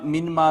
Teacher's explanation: نون کا میم میں ادغام ہو گیا، میم مشدد ہو گئی، لہٰذا اس پہ غنہ بھی کریں گے